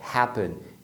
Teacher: a primeira sílaba é a mais forte, happen. Então, você não dobra nada.